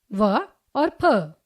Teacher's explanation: जो वर्ण दांत और ओष्ठ की सहायता से बोले जाते हैं उन्हें दंतोष्ठीय वर्ण कहते हैं।